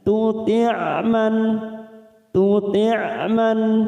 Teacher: sifatnya kita alirkan karena mempunyai sifat tawasud dan jahar